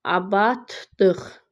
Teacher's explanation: D t-ya keçir. L d-ya, q da x-ya. Hərf səsin sayı deyir bərabərdir.